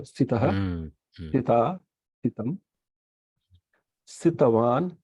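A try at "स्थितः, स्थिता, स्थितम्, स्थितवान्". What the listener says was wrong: But your thakara is getting elided a little bit pronouncing. Yeah, fifth one onwards, just go hard on the thakara.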